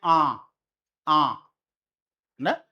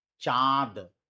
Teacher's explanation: पहले मुख खुल रहा है फिर नाक से आवाज आ रही है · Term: अनुनासिक